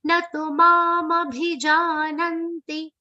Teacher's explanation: Na and tu. One of them becomes long for many people. You have to be very careful. Both are short sounds.